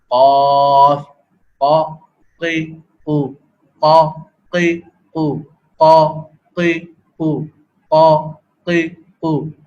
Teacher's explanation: یعنی زبان کی جڑ، زبان کا وہ حصہ جو کہ حلق سے جڑا ہوا ہے وہ زبان کی جڑ کہلاتا ہے. وہ زبان کی جڑ بلند ہو کر اوپر تالو سے متصل حصے پر لگتی ہے، اس سے آواز پیدا ہوتی ہے